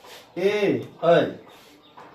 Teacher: ए और ऐ का उच्चारण में कंठ और तालु का उपयोग होता है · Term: कंठ तालव्य वर्ण